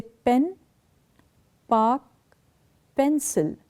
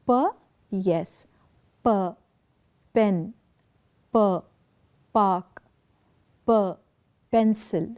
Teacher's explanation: the place of articulation is the lips the Two Lips coming close together · to labal referring to lips so by labal meaning Two Lips Two Lips come together in the articulation of these consonant sounds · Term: bilabial